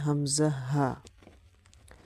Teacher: এক নাম্বার মাখরাজ হলকের শুরু হইতে